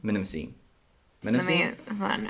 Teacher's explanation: You do pronounce both the M and the N in that.